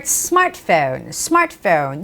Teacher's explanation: you do not have to say the t sound clearly